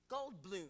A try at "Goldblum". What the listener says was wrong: Yeah, you're saying Golden Bloom.